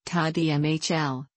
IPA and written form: taːdʒ ˈmɛːɦ(ə)l (ताज महल)